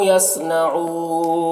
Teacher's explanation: यसनऊन सौद को पुर पढ़ेंगे, ऊ में वाव मद्दा है और नून का ज़बर सुकून से बदल जाएगा तो मद्दा आरिज़ वक्फ़ी होगा